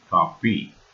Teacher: Like in Tamil, Koreans don't pronounce F sound while they speak. Thus, coffee is pronounced as kapi.